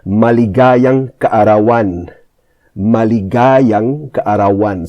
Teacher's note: So the stress is on the ga and the an at the back